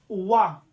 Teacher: जब आप देखेंगे वा का किससे होता है, तो दंतोष्ठ इसका होता है उच्चारण स्थान